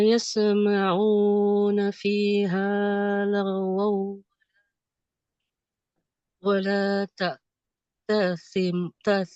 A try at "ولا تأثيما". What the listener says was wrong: Taksima 2 harkat dua-duanya. Taksima 2 harkat.